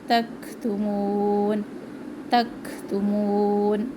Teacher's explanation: کاف میں سانس کی کیفیت رہتی ہے جب اس کو ساکن کے ساتھ ادا کرتے ہیں. اس کو تک ہلانا بھی نہیں ہے، تک سختی سے بھی نہیں پڑھنا.